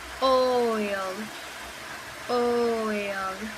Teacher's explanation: To produce this sound, we move from a more open position to a more closed position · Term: diphthong